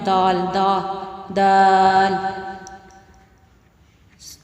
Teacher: زبان کی جو نوک ہے، جو وہ اوپر والے جو ہمارے 2 دانت ہیں ان کو ثنایا علیہ بولتے ہیں، اس کی جڑ سے لگے گی تو یہ دال ادا ہوگا